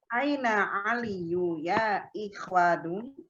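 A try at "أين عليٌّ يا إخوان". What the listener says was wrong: Aliyun bertanwin, Bu ya. Sebutkan tanwinnya. Ulang. A-nya pendek. Aina aliyun. Aina aliyun.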